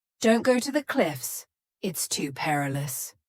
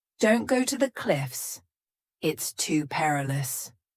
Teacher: if you say this quickly you link it together with a z sound